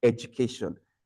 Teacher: So please take note of that affricate sound, most especially in education.